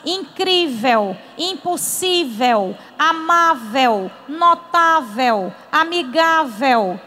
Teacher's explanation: a sílaba forte é a penúltima que aqui é o cri terminada em L são acentuadas incrível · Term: paroxítona